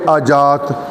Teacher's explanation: یہ ہمارا پنجابی ہونا اس لہجے کی یا کو جیم کی طرح اور جیم کو یا کی طرح یہ جو ہم پڑھ دیتے ہیں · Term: ہمارا لہجہ